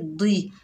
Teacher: और दौद के नीचे ज़ेर है, बगैर खींचे पढ़ेंगे दी, दौद जो है हुरूफ़ मुस्ताला में से तो मोटा अदा करेंगे